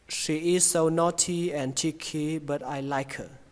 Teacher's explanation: Ở đây có một chỗ các bạn có thể nối đó là chữ is với so thành iso.